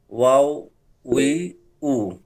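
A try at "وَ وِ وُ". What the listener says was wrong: ওয়াও না, কি হবে? ওয়া হবে, ওয়া। ওয়াওটা হচ্ছে পুরা হরফের নাম। ভু ভু ভু। উ না, ভু ভু। ভু ভু।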